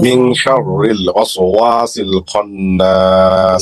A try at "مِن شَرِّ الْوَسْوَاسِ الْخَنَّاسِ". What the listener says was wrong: আপনার অনুষ্ঠান হয়েছে কিন্তু একালিফ টানতে পারেন নাই মিং শাররিল